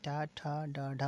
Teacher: हिंदी की मूर्धन्य ध्वनियाँ कौन कौन सी हैं, जिनका क्या होता है, जिनका जिसपे मूर्धा पे यानी कि जो जिह्वा स्पर्श करती है तो मूर्धन्य ध्वनियाँ होती हैं